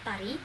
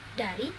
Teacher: Konsonan hambat dental itu mencakup teh dan deh, Contoh katanya adalah tari, dari.